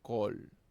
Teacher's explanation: el kametatuf, una vocal corta de tipo o